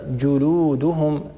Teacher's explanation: الجيم هي حرف شديد ينحبس الصوت عند النطق به